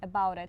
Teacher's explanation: Yeah, it's also easier to speak, or to link it, I mean, because about ends with a consonant. And it starts with a vowel. So you kind of want to link them.